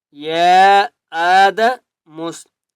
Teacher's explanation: یا مد کھڑا زبر یا کے اوپر چھوٹی مد ہے، اس لیے 3 الف کی مقدار کھینچ کر پڑھیں گے